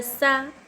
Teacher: सीन पर हरकत ज़बर ज़रा भी नहीं खींचना चाहिए।